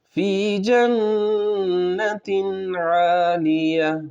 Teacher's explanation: یہاں پر نون مشدد کا غنہ ہوگا اور پھر عین ہے، اس پر بھی دھیان دینا ہے۔